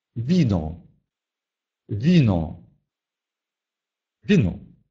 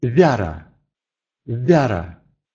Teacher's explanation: Перед «и» буква «ву» читается мягко.